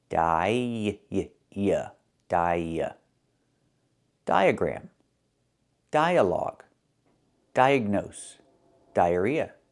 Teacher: we link these two vowels with the sound y like in yellow in yesterday.